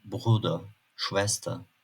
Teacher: Genellikle sözcüğün sonunda bulunan -er sesleri ığ gibi çıktığı için biraz a'ya benzer.